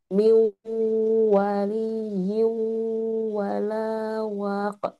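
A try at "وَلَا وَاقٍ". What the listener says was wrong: Panjang waq. Wa ada mad ya. Nah, dimonyongkan. Panjang. Ada huruf mad di depan wa.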